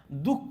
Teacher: विसर्गाचा उच्चार हला झटका दिल्यासारखा करायचा आहे